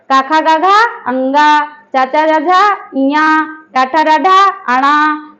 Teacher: जो हमारा पंचमा अक्षर है तो ये हमारा इसकी जो ध्वनि है वो निकलती है नाक से, इसलिए हम जो है ये हमारा जो अनुस्वार है ये नाम में भी परिवर्तित हो सकता है। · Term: नासिक वर्ण